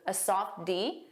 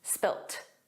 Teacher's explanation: In American English, it's always spilled, a soft D, but in British English, it's spilt, spilt. So you might hear spilled, you might hear spilt, but those final sounds aren't pronounced fully in spoken English in both British and American English.